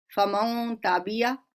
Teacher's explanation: नून की आवाज इस तरह से आपने छुपानी है कि साफ छुपते भी नहीं, सामने आते भी नहीं। ये नहीं होगा कि बिल्कुल उसे हमने हज़्फ कर देना है, उसे डिलीट कर देना है या उसे हमने नून को साइलेंट कर देना है। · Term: इख्फा